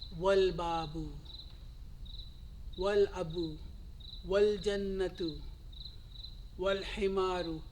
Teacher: Now I am omitting the hamza sound here. I'm going directly into the lam sound. Right? Al khubzu, al ainu, wal ghadau, wal famu, wal qamaru, wal kalbu, So when a particle comes in the beginning of the moon letters, we will omit the Hamza sound. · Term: Hamzatul Wasal